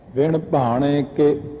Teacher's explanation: ਕੱਕੇ ਦੀ ਸਿਹਾਰੀ ਬਹੁਤ ਸੂਖਮ ਆਵਾਜ਼ ਦਿੰਦੀ ਹੈ